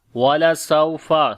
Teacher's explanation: سین کے بعد واو لین ہے، نرم پڑھیں گے